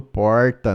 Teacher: l no final por U em que Brasil vira Brasil e usar o r retroflexo a pronúncia arrastada do r no fim das sílabas